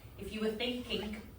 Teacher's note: she glottal stops her INGs